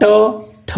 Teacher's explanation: जीभ है वो तालु के थोड़ी सी पीछे जाती है, जो आपके मुर्दा है वहां पर जाती है।